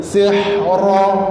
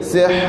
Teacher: Dia berhenti. Bila kita berhenti, dia tak bunyi sihra. Dia akan jadi sihr. Ra tu ra mati.